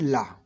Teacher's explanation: पार्श्विक व्यंजन, हिंदी के ला ध्वनि पार्श्विक ध्वनि है, किंतु जिह्वा नोक के दोनों तरफ से हवा के बाहर निकलने का रास्ता होता है। दोनों तरफ पार्श्वों से हवा निकलने के कारण इन ध्वनियों को पार्श्विक ध्वनियाँ कहा जाता है